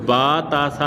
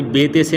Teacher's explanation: اور باقی اس میں آپ نے مجہول نہیں پڑھنا بلکہ معروف پڑھنا ہے اچھے طریقے سے۔ عربی لہجے میں ان کو با تا سا پڑھنا ہے، آپ نے اردو لہجے والا یعنی بے تے سے نہیں پڑھنا ہے